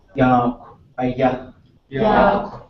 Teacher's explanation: You have the high tone over the Y and the emphasis on ya.